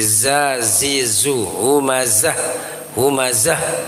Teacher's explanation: Zai itu ada sofirnya, maka mesti jelas.